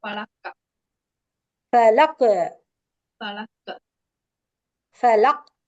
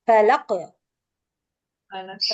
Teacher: சோ கல்கலா அப்படின்னா ஒரு சின்ன ஷேக் கொடுத்து ஓதணும்